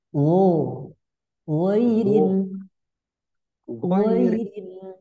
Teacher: pangkal tenggurukan atas ya keluar dari tenggurokan bagian atas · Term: huruf Gin